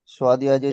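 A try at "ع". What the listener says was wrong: সোয়াদ নয়, এটা আইন, এটাও আইন এটাও আইন। আইনকে সোয়াদ পড়ছেন কেন? আইন ইয়াজের ই।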